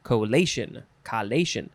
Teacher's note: the lay is emphasized